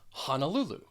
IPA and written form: ˌhɒn əˈlu lu (Honolulu)